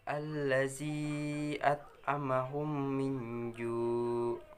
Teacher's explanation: Idgham mimi yaitu apabila mim mati bertemu dengan huruf mim dibaca dengung